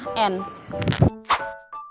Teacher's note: bunyi apiko alveolar adalah bunyi yang dihasilkan oleh ujung lidah dan gusi atas